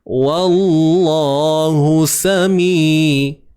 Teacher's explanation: Hu baris depan satu harakat je lah. Sin baris atas, sa satu harakat, mi dua harakat.